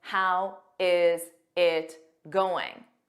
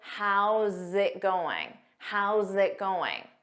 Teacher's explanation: notice those sounds how zit zit you have that strong zit